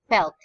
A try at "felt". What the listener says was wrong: just have to also emphasize the T sound, okay? So that it's more audible.